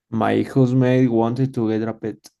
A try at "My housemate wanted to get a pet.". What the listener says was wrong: You say ma. Remember, this is a function word, so say my